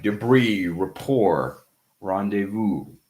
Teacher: in words that have a French origin, we eliminate usually the last consonant